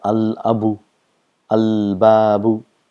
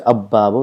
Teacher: the lam and the letter next to lam both are pronounced. If you see here, if we have a word qamarun, if we add al and qamar, it becomes al-qamaru. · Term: huruful qamar